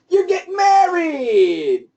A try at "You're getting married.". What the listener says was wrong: Be happy. You don't sound happy.